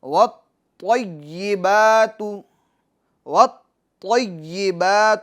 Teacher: طا حروف قلقلہ میں سے مشدد ہے تو لہٰذا اس میں جمع کرنا ہوگا